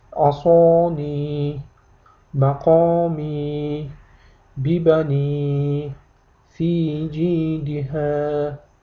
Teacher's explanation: 2 harakat miqdorida i'ni cho'zib o'qiysiz.